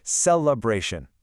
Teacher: Notice how the primary linguistic stress lands heavily on that third syllable. Bra. Say it with me.